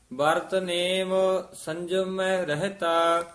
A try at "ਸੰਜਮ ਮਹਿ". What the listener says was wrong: ਸੰਜਮ ਮੈਂ ਹਾਹਾ ਸ਼ੁੱਧ ਬੋਲਣਾ ਹੈ, ਦੋਵੇਂ ਮੰਮੇ ਹਨ, ਧਿਆਨ ਨਾਲ ਲਖੇਰ ਕੇ ਪੜਨਾ। ਵਰਤ ਨੇਮ ਸੰਜਮ ਮਹਿ ਰਹਤਾ।